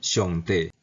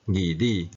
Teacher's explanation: 第七声变做第三声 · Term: 变调音